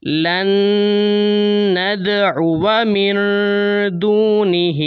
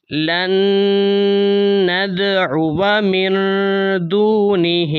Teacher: الف کی وجہ سے واو کو لمبا نہیں کیا جائے گا